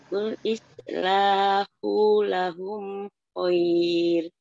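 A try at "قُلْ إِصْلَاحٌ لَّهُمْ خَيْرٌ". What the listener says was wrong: Kul islahul kul ada tanwin jadi harus dihidupkan. Kul islahul lahum khair.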